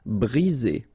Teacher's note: 1 vowel, 2 vowels, and only 1 S between the 2, so you get the sound Z